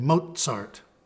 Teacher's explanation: In German, this is pronounced as a combination of T and S